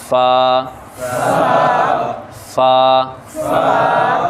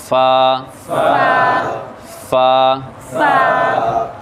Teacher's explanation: اس میں ہلکی سی سانس کی آواز آئے، ہلکی سی ہوا کی، ہلکی سی سانس یا ہوا کی آواز آئے، تھوڑی سی، بہت زیادہ نہیں، تھوڑی سی، اور پھر آپ نے پڑھنا ہے فا فا، بالکل نرمی سے، فا فا۔